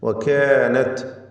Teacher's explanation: ഈ പദത്തിലെ കാഫ്, അതിൻ്റെ ദീർഘാക്ഷരമായ അലിഫ്, ഈ അലിഫിനൊക്കെ തർക്കീഖാണ്. അലിഫ് എന്ന അക്ഷരം, ദീർഘാക്ഷരമായ അലിഫ് തഫ്ഖീമിലും തർക്കീഖിലും ദീർഘിപ്പിക്കപ്പെടുന്ന അക്ഷരത്തെ പിന്തുടരുന്നതാണ് എന്നതും ശ്രദ്ധിക്കേണ്ട കാര്യമാണ്.